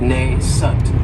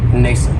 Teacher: this word has 2 syllables, and the stress is on that first syllable. It has the long A sound, nascent. That second syllable has that schwa, nascent.